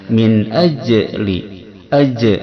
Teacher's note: Cara membaca idhar halqi ini yaitu membaca nunnya dengan jelas tanpa dengung kesamaran. Min ajli, ajli jim sukun di tengah kalimat ini hukumnya cara bacanya dikolkolahkan, dipantulkan